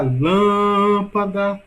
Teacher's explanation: sílaba mais longa, lã. Logo, a sílaba mais forte, a sílaba tônica de lâmpada é lã.